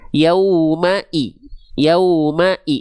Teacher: Wanti-wanti ketika teman-teman melafalkan huruf hijaiyah, apapun hurufnya dan harakatnya baris bawah alias vokal i harakat kasrah teman-teman sekalian, maka dibaca jelas vokal i-nya. Jangan miring-miring ke vokal e.